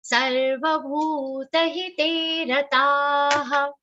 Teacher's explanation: Only bhu, te and ta should be long sounds.